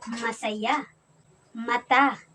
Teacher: si m naman ay napabilang sa labi at sa pailong